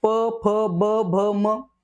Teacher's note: त्यांचा उच्चार करताना दोघ ओट आपले एकमेका स्पर्श होतात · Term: ओष्ट्य